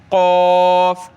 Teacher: क़ाफ को मोटा करें, गले से निकालें